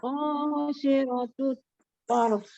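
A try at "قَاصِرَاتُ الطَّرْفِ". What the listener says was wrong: Rohnya panjang. Oke, rohnya tidak boleh lebih dari 2 harokat.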